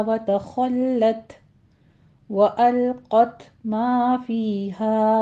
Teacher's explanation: ما فیہا میں حروف مدہ ہیں، 2 کاؤنٹ کرنا ہے۔ ما فیہا نہیں کہنا، فیہا دونوں میں 2 کاؤنٹ کرنا ہے۔